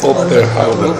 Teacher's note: Un B estilizado, intervocálico. Soa como un P, mas non o é.